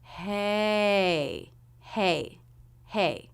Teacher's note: notice the shape of the voice there's a little curve up and then a curve down in the voice hey hey hey so basically it's a stressed word we start · we start with the h consonant sound and go into the a as in say diphthong